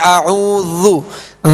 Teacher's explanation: ذال کو نرمی کے ساتھ پڑھیں گے، ذال پر پیش ہے، اس کو کھینچیں گے نہیں